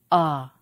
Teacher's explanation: When you say ah, you drop your jaw, and the tongue is low in the mouth. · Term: low vowel sound